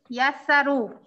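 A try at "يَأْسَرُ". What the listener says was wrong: Yasaru. Kailangan merong ya. Parang kasi tunog yun ng hamza eh. Ya.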